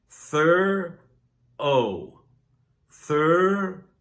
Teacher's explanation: It's pronounced with two syllables thur-oh thur-oh